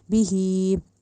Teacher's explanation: जो खड़ी ज़ेर है सिर्फ उसी को एक अलिफ जितना लंबा करना है, ज़ेर ज़बर ज़ेर या पेश को नहीं करना, तो इसको बी ही नहीं कहना, बी ही कहना है, ठीक है।